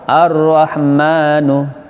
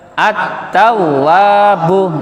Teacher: Lam yang tidak dibaca karena ketemu tasdid.